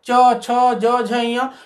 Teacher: जहां हमारी जीभ जो है तालु को स्पर्श करती है तो ऐसे वर्णों को हम कहेंगे तालव्य वर्ण। तो च, छ, ज, झ, ञ हमारे जिह्वा का सरफेस जो है ऊपर उठता है और तालु को जो ऊपर गहरा ऊपर ऐसे आर्च जैसा भाग है उसको स्पर्श करता है